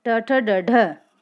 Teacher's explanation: मूर्धन्य मतलब जिनको उच्चारित करते समय हमारी जीवा पलटते हुए ऊपरी तालु से टच होती हो